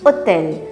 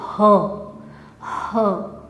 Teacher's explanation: Ha. En français, c'est un H muet, on dit hôtel. Mais en sanskrit, ha, c'est vraiment une consonne pleine.